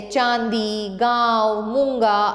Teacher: अनुनासिक का उच्चारण नाक और मुंह दोनों से किया जाता है